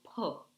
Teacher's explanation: it's called as an aspirated sound, where that when you say p, there's an air which should come out of your mouth, so it's not p.